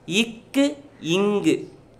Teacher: நாவின் முதற் பகுதி அன்னத்தின் அடிப்பகுதியை பொருந்ததால் பிறக்கின்றன